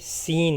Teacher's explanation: سین اس کا مخرج زا کی طرح ہے اور اسے ادا کرتے وقت بھی سیٹی جیسی آواز نکلے گی